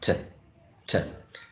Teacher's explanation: t is aspirated because it's in initial position